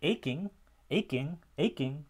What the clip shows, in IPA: éj.kiŋ